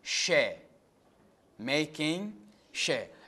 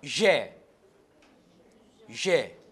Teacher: She. Voiceless. Plato alveolar fricative. Je, voiced, plato alveolar fricative.